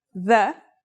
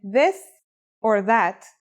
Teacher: This letter's pronunciation is a voiced sound, the, as in this or that.